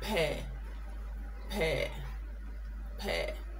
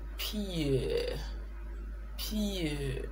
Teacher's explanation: So P-A-I-R contains the diphthong er, and P-E-E-R contains the diphthong ear